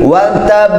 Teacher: Qalqalah kubra ya, dipantulkan di akhir ayat ini, tetapi ada tasydid di sana, kemudian tahan dulu baru mantul.